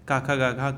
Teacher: जो क वर्ग है उसका उच्चारण स्थान क्या होता है? कंठ होता है।